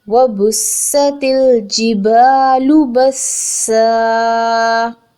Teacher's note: سین کی وصل کو ضرور پرومیننٹ کرنا ہے because it's a whistling letter